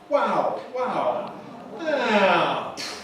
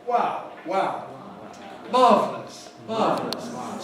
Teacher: The voice starts high and comes down low. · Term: fall